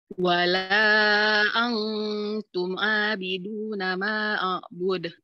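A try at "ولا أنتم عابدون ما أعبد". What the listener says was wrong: Nah, maknya itu panjangkan 4.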